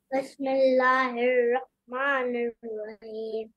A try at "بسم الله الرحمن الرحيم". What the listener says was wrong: ہاں واہ کو کھینچنا نہیں ہے.